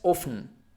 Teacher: It's like a bump, it's like you have a sort of apostrophe here, and you just pronounce it like this, often, and you almost don't perceive the T sound